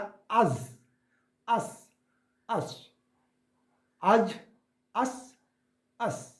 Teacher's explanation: জিহ্বার আগা ও সামনের নিচের দুটো দাঁতের গোড়া বা মারির সাথে, এটা যে সামনে আমাদের দুটো দাঁত আছে তার নিচের অংশ হবে, নিচের অংশ থেকে উচ্চারণ হবে।